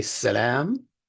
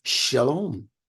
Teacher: the S sound of salam and the SH sound of shalom are interchangeable. It's the same word.